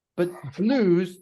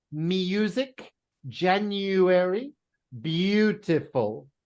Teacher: But blues is oo. It's not EU, it's blues.